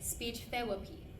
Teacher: I could not figure out the th sound, substituting it with the f sound.